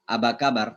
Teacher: Jadi Arab itu nggak ada pa. Makanya orang Mesir kalau bilang apa kabar, mereka akan bilang aba kabar karena mereka nggak punya pa. Mereka punya fa saja.